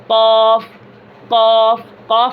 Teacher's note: زبان اقصائے لسان یعنی زبان کی جڑ، ٹھیک ہے، اس سے قاف اور کاف نکلتے ہیں۔